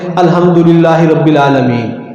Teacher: اب اس میں ہا بھی اڑ گئی، عین بھی اڑ گئی، اور یہ معنی بھی کچھ سے کچھ ہو گیا، سب کچھ تبدیل ہو گیا اس کے اندر۔